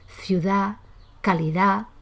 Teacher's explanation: La D final se realiza muy debilitada o se pierde por completo